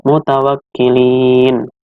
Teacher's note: bacaannya dibaca panjang sepanjang dua harokat sampai 6 harakat